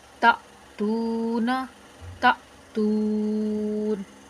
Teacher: तो यहाँ पर चूँकि नून जो है वो साकिन तो नहीं है, लेकिन हम ख़ुद साकिन कर रहे हैं वक्फ़ की हालत में, तो यहाँ पर मद्दे वक्फ़ी आर्जी होगी, यानी कि आर्जी तौर पर हम इसको थोड़ा सा खींच कर पढ़ेंगे